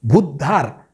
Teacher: भचा उकार मात्र इथं दीर्घ असला पाहिजे